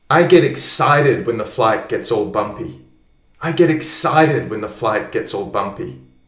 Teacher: What are the strong words here? Excited. Bumpy. The other ones are softer, aren't they?